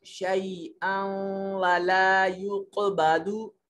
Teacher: यहाँ नून तनवीन के बाद वाव है तो यहाँ इदगाम करेंगे और आवाज को थोड़ा सा नाक में ले जाने की कोशिश करेंगे